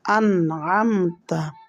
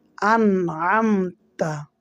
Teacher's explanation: দেখেন মিম সাকিন মিম সাকিনের বামে তা হচ্ছে ইজারে স্বাভাবিক হরফ মিম সাকিন কে গুন্না ছাড়া স্পষ্ট করিয়া পড়তে হবে